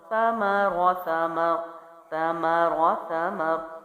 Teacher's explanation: اگلا جو لفظ ہے اس کی ادائیگی دیکھتے ہیں، وہ ہے ثمرا، سا زبر سا، سا چونکہ نرم حروف میں سے ہے جو ہم پیچھے ویڈیوز میں کر چکے ہیں، میم ہونٹوں سے اور را پھر سے موٹا ہے